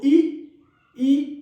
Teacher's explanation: जीभ की ऊंचाई अधिकतम हो रही